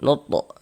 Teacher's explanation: Huruf to termasuk salah satu huruf qalqalah. Kalau sukun dipantulkan. Nuto. Nah, dan ini termasuk kepada qalqalah sugro.